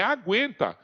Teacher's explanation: na palavra aguenta eu pronunciei o u eu fiz bico